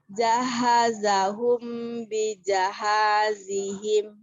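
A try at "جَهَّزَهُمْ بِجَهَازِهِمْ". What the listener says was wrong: Khusus huruf H, karena huruf H adalah huruf rokoah, jadi baca tasdidnya nggak boleh gitu. Jahazahum, ya. Jaha, harus ada sempet tuh. Jaha, harus ngalir dulu.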